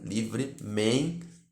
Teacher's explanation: O vocábulo livremente é paroxítono porque o acento, a tonicidade principal dessa palavra recai sobre a sua penúltima sílaba